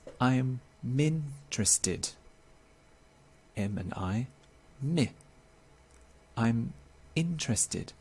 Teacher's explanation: native speakers will often take the final consonant and connect it to the next vowel in the next word the consonant is m the next vowel is i pronounced together it's i'm interested m and i me i'm interested